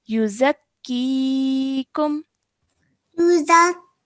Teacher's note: the ya mud needs to be prolonged for about 2 seconds